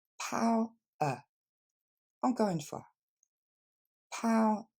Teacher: il va falloir le couper après le son ow que vous retrouvez dans now ou how